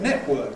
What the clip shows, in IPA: ˈneʔwɜːk